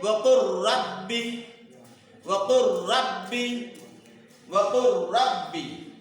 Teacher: لام ساکن کے بعد را آیا ہے، لام اور را کے مخرج دونوں بالکل قریب قریب ہے، دونوں کے بیچ میں کوئی فاصلہ نہیں ہے، اس لیے لام کو را میں ادغام کر کے پڑھا جائے گا۔ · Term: ادغام متقاربین